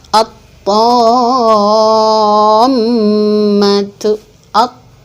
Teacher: Jadi alnya tidak dibaca jelas, dimasukkan ke dalam huruf yang setelah al dan ditandai juga dengan adanya tasydid. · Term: idgham syamsi